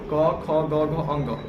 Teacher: तो जब भी कवर यानी क, ख, ग, घ, कवर का उच्चारण करते हैं तो भार हमारा कहाँ पड़ता है? कंठ पे पड़ता है। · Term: कवर्ग